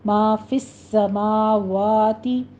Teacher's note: سین کی آواز سیٹی کی لے کر آنی ہے، تشدید ادا کرنی ہے